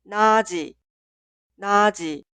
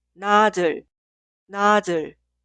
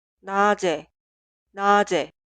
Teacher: la consonante final 지읒 se traslada al lugar de 이응 en la sílaba posterior y se pronuncia como consonante inicial